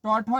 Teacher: टौठो ये आपका मूर्धा से बोला जाता है